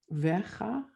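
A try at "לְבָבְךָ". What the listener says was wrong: No, so the second vet is just going to have a V sound. So you've kind of got a va plus a vu. Levavcha.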